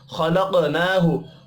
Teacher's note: अलिफ मद्दा को एक अलिफ के बराबर खींच कर पढ़ना है। खलक़नाहु खा और क़ाफ भी पर पढ़े जाएंगे। क़ाफ साकिन है, कलकला करेंगे।